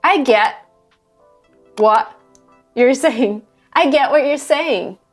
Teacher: see the T sound doesn't really happen the tongue never touches the top of our mouth